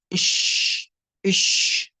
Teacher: انتشار الريح أو الهواء في الفم عند النطق بحرف الشين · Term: صفة التفشي